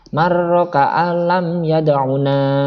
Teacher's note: Tapi nunnya nggak kedengeran. Meskipun dalam tulisan ada huruf nun, tapi secara lisan nggak kedengeran. · Kenapa kok sedikit ada lama di situ? Karena lamnya bertasdid. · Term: idgham bila guna